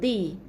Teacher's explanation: hujung lidah tekan kepada pangkal gigi kacip ataupun gigi gigi gunting kita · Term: huruf dal